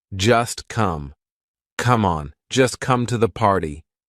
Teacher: just is followed by come. So that t is in between two consonants. It's in between the s and the c of come. So we're going to make it silent.